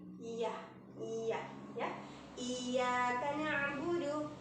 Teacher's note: Jadi dibaca 2 harokat dan bertasydid, lebih ditekan, tapi tidak terlalu menekan.